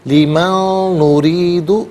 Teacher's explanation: ما نشاء لی، من نرید، من میں نون ساکن سے نریدو کے نون کے ساتھ ملائیں گے، نون کی آواز کو غننے کے ساتھ ہی ادا کیا جائے گا۔ لیمن نرید، نریدو میں را کے نیچے زیر ہے، را کو باریک کر کے پڑھیں گے۔